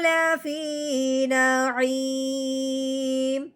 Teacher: ابرار لفی نعیم، ہاں جی لفی یا ساکن سے پہلے زیر ہے، اب ہم نے یا ساکن کو ایک الف کے برابر لمبا کرنا ہے، فا کو یا ساکن کے ساتھ ملانا ہے، فا یا زیر فی، لفی نعیم۔